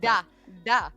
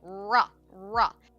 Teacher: We don't have the tongue tip R, like Japanese has, where it sounds like da, da. We have a hard ra, ra.